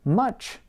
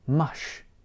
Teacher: might replace an affricate sound, such as ch, with a fricative sound, such as sh. The result is that a word like much might sound more like mush.